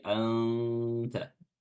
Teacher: menyamarkan dengan meletakkan makhraj huruf ta meletakkan lidah kita pada makhraj huruf setelahnya yaitu huruf ta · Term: ikhfa